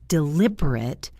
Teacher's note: As an adjective, it's deliberate with a short final syllable